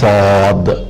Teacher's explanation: صاد کو موٹا پڑھا جاتا ہے، سین باریک ہے، سین باریک ہے اور صاد کی آواز پر اور موٹی پڑھی جاتی ہے